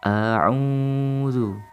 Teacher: Di sini terdapat hukum bacaan mad tabi'i yang dimana kita harus membacanya panjang, 2 harokat. A'udzu. Di sana terdapat huruf wawu sukun dan sebelumnya terdapat dhammah.